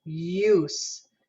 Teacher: diphthongs and then this is considered a diphthong it's u where we're going to use a glide this j symbol symbolizes a y sound